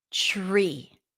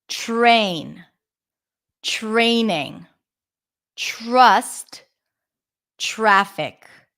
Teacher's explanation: when the T appears before an R the T becomes a CH sound as in chicken